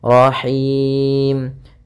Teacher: Nah, hati-hati dalam pelafalan ha ini ha kecil dari tengah tenggorokan kita